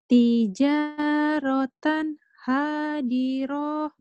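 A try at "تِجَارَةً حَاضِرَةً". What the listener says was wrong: Hadiroh. Kenapa panjang? Tijarotan Hadiroh. Ulang.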